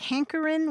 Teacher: did he pronounce it like hankerin without the final G? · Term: drop the G